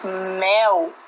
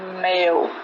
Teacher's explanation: o ar tem acesso à cavidade nasal, sendo lançado pelas narinas e também pela boca após a saída da oclusão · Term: som nasal